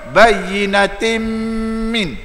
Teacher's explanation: gunnah kena dua harakat dengung